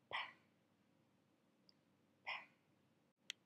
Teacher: it's the same manner and the same place as b, but this one is voiceless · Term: bilabial